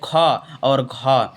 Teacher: और दूसरा और चौथा जो आता है जैसे ख और घ, तो ये कौन से? महाप्राण में आएंगे